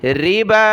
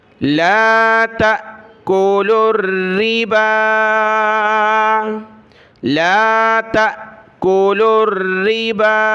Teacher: با کے اوپر کھڑا زبر ہے اور مد ہے تو اس کو زیادہ کھینچنا ہے اوپر کی طرف. ربا، یہ واو الف لکھائی میں آئے گا، اس کو پڑھیں گے نہیں.